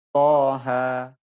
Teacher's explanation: To-nya 2 harokat, ha-nya juga 2 harokat. · mad lazim harfi mukhaffaf wajib panjang 2 harokat panjangnya ya